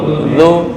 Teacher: Ujung lidah dengan ujung gigi seri atas. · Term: zal